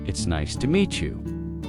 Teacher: Stress, nice and meet, to make it sound warmer.